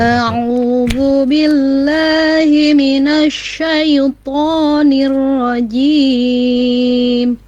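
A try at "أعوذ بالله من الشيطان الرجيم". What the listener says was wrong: Billahi ya, yang itunya saja Bu. A'udzu billahi. Kurang, ini fitahnya kurang ya. Nanti dibuka dikit lagi.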